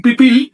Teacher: No en el segundo, sino en el primero. Eliminé justamente el sonido que cierra la sílaba, porque es mucho más eufónico decir pip pil que pil pil.